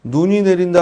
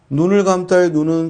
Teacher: 눈이 내린다 할 때 눈은 긴 소리고 눈을 감싸에 눈은 짧은 소리다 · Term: 소리의 길이